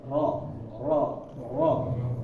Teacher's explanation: ro ini bergetar Tetapi kalau bisa dihitung getarannya cuma satu sama dua kali